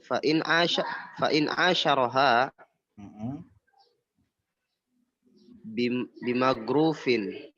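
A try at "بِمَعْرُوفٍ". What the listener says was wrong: Salah itu bukan going. Ain itu ain.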